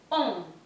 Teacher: Tenemos tres letras, pero es una vocal nasal. Cambia el sonido. La T final no se está pronunciando.